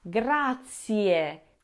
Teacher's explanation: That E at the end of grazie is not stressed and not very loud, but it is there. It sounds like e at the end of the word.